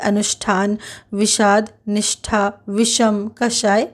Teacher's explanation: हिंदी में अब मुर्धन्य का उच्चारण तालव्य श के समान होता है मुर्धन्य स वर्ण उच्चारण में नहीं है पर लेखन में अब